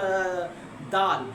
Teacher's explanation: زبان کا اگلا حصہ اوپر والے دانتوں کے اینڈ والی جگہ پہ لگتا ہے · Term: مخرج